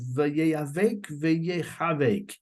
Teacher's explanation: He says another possibility, the word vayeyavek is like the word vayechavek. because the letter ches, if it's pronounced in a certain very guttural way, it sounds almost like an aleph